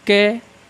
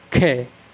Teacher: अब देखेंगे गा, जब हम गा का उच्चारण करते हैं तो घा से क्या है कम हवा निकलती है गा घ। जब हम का और खा में देखते हैं तो खा का उच्चारण करने पर हवा कुछ ज़्यादा निकलती है और स्पीड से निकलती है